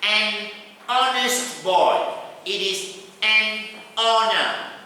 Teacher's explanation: all these words, the H sound is dropped.